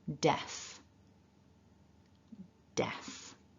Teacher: we start with the voiced d we've got a short ah and then a f so we need a bit of air hissing out